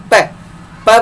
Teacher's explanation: प बोलने पे दोनों होठ मिलकर अलग होते हैं, तो उच्चारण स्थान क्या हो गया, होठ, ओष्ठ हो गया।